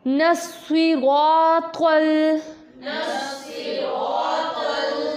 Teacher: जब हमारी ज़ुबान की नोक हमारे सामने वाले दो दांतों से टकराएगी, ठीक है, तब हमारा त्वा अदा होगा